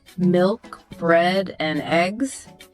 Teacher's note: Level intonation. This is where your voice stays pretty flat. Think of someone trailing off, lost in thought, "I'm not sure," or listing items, milk, bread, and eggs.